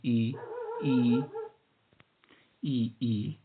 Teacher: ये स्वर बोलते समय जीभ के आगे की भाग, आगे का जो भाग होता है जीभ का, बोलते समय वह उठता है। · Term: अग्र स्वर